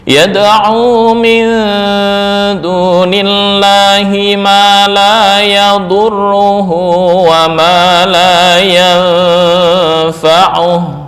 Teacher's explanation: cara membaca ikhfa-nya lebih mendominasi dibandingkan gunnah